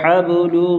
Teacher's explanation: حب با پر قلقلہ کریں گے